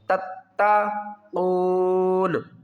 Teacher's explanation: تا کو تا کے ساتھ ملائیں گے، اس تا کے اوپر سختی کریں گے